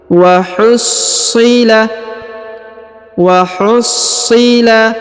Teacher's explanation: perhatikan huruf SH ditahan dan ditekan karena terdapat tanda tasdid